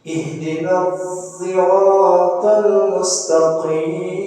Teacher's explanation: Mengucapkan lafaz sirat tidak dengan sad dan tidak dengan sin, tapi dengan ismam. Bi ismam sad zai, dengan mengismamkan sad dengan suara zai. Jadi pengucapan sirat ini menurut Imam Hamzah yaitu zirat.